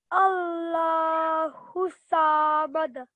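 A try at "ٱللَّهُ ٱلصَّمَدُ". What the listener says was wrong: Well done. Okay, so that was very nice.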